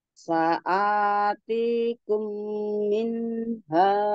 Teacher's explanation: Saati panjangnya sama, jangan panjangan A-nya daripada T-nya ya. Saatikum minha.